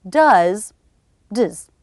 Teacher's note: It's less clear, very, very quick, and we reduce the vowel to the schwa.